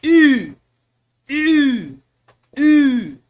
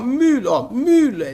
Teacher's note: Mas não é o U, gente. Ele é um som também intermediário. Ele fica entre o I e o nosso U.